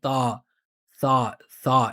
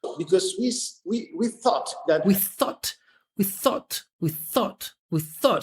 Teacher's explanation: look how small his like ah vowel is.